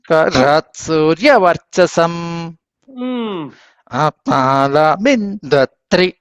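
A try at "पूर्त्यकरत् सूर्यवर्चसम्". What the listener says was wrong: కరత్ అక్కడ ఆపోకండి కలిపి చెప్పేసేయండి కరత్ సూర్యవర్చసం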